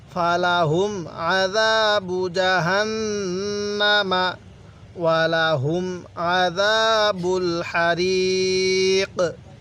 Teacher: তাহলে ফালাহুম আযাবু জাহান্নামা, গুন্নাহ করব, নুনের উপর তাসদিদ আছে জন্য আমাদের গুন্নাহ করতে হবে